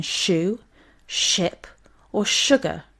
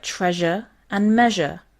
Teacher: these two are the palato alveolar fricatives and occur when the tip of the tongue is behind the alveolar ridge